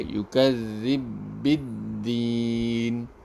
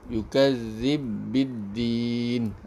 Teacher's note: Jadi bu dengan bi ni kita gabung jadi dengan satu huruf. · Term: idgham kabir